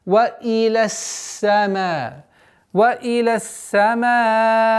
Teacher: Удлинение в размере 4 огласовок, огласовки фатха.